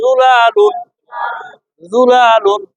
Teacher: শোনেন, জিম দেয়া না, জল নরম করে একেবারে জুলালুন। ঠোঁট গোল করে বলেন, ঠোঁটটা গোল করে জুলালুন